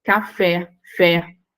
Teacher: O fé, última sílaba acentuada.